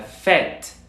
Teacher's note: Únicamente tenemos que abrir un poco más la boca. Sigue siendo una E, pero con la boca más hacia abajo, es decir, más abierta. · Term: E abierta